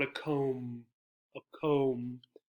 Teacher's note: So there are three sounds, the k, the o, and the m. Notice that the b is silent.